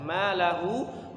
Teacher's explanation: Malahu, hunya dipanjangkan 5 harokat ya. Kita panjangkan 4 atau 5 harokat.